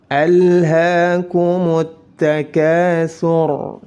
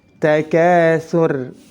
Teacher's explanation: Ketika ada ra sukun karena waqaf didahului oleh dhammah maka harus dibaca tafkhim, tebal.